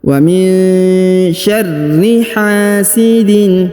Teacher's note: huruf nun sukun bertemu dengan Sya maka didengungkan dan disamarkan huruf rnya di ditasdidkan atau dibaca dengan ditekan dan ditahan dua